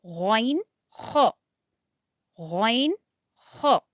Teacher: अपर throat, अपर throat शुरू हलक, जहाँ से 2 हुर्फ़ अदा होते हैं